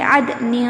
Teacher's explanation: دیکھیں، عدن تجری، یہاں پہ دیکھیں نون ساکن کے بعد تا ہے، یہاں پر پڑھیں گے عدن، اخفاء نون کی آواز عدنین نہیں کہنا بلکہ عدن، اور غنہ بھی کرنا ہے، یعنی نون کی آواز ہماری ناک میں گھومے گی